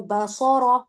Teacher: با باریک اور صاد را کو پر کریں گی